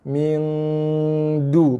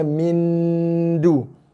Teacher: Boleh lajak sampai 3-4 harakat. Habiskan dengungan, barulah lidah kita menyentuh makhraj huruf dal.